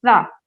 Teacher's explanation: ایسے سا کو جب ادا کیا جائے گا، میں نے آپ کو پہلے دن بتایا تھا کہ ادا کرتے وقت ٹنگ کو دونوں تیت کے بیچ میں لے کر آئیں گے